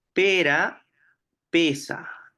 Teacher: simple la r per de esa eh digamos fricativa alveolar sorda ambas son alveolares tanto la vibrante r como la fricativa s